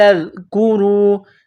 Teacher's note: ذال کو نرم کرنا ہے، زبان کا سرہ تھوڑا سا باہر نکالیں گے ذال کو پڑھتے وقت